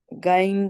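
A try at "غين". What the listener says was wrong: گا نہیں ہے غائن غا غا غا نہیں پھر نہیں گین غائن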